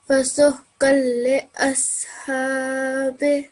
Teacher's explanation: we're not going to hear the sound of the tanveen at all. So it's going to be completely merged into the lam.